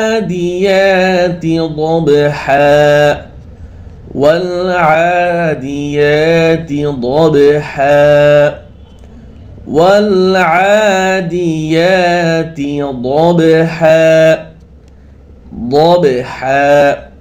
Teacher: এক আলিফ টান হয় والعاديات ضبحا والعاديات ضبحا والعاديات ضبحا ضبحا ضاد হরফ মোটা ভাবে আদায় করবেন যেন দাবহা যেন না হয়